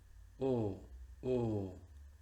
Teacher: En este caso la lengua va a ser de O, pero los labios de U. El resultado es una O cerrada. Repito, lengua de O, labios de U, resultado O, O.